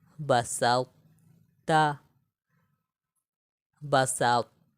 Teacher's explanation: موٹائی کو برقرار رکھتے ہوئے طا میں ہم قلقلہ بھی نہیں کریں گے. ٹھیک ہے، طا میں ہم قلقلہ بھی نہیں کریں گے، لیکن طا کو موٹا بھی پڑھیں گے اور تا کو باریک پڑھیں گے.